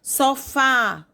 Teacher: Sofá, o A aberto, acento agudo, oxítona